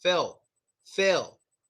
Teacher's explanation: in America, my friends, they never pronounce the L. They don't pronounce it at all. They kind of say Phil.